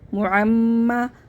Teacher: یعنی کہ اس میں آواز ہونٹوں میں رہتی ہے اور آواز ناک میں جاتی ہے. اس میں غنہ کا کام، غنہ جو ہوتا ہے ناک میں آواز چھپا کے پڑھنے کو کہتے ہیں.